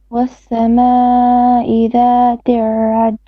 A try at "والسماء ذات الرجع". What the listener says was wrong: One more time on the sama, a little bit longer. والسماء ذات الرجع.